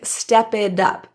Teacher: The T in it becomes a flap T, sounding more like a soft D sound. It sounds more like step it up, instead of it up, it up.